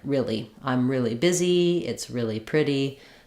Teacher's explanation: It's more like really, where we either say the E sound twice, really, or we often reduce this E sound to more of an I sound, like really. · as we change from real to really the vowel can change and we lose some of this vowel to vowel linking